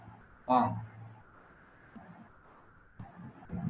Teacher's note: এটা ঙ এবং অনুস্বর এর উচ্চারণ হয় অং এর মতো, আর এই দুটি বর্ণই কিন্তু নাসিক্য বর্ণ।